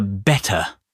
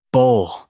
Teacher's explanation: replace the ter in the middle with a little pause, like your vocal cords are momentarily shutting the door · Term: glottal stop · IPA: [ʔ]